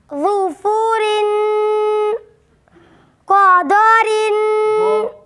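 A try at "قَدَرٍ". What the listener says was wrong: दो इसको मोटा नहीं करें। क़दरिन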